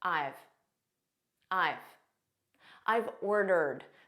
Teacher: This is a contraction of I have. So we say it as one word, I've. And it's a very unstressed pronunciation.